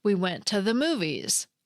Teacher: the preposition “to” has a weak form that sounds like “tuh.”